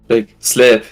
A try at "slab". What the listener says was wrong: No. No. Slab with a B. A B.